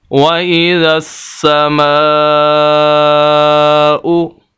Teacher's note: مد 2 طرح کی ہوتی ہے، ایک بڑی مد اور ایک چھوٹی مد، یہ بڑی مد کی علامت ہے۔ اس کو 5 الف کے برابر ہم نے لمبا کرنا ہے میم کو